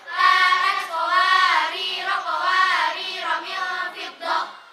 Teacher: Jika keduanya wasal maka ro-nya dibaca pendek semua